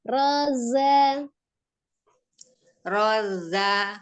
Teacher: Tidak terlalu ditekan zanya, jangan terlalu ditekan karena dia sifatnya asfir, ada desisnya saja za, bukan za.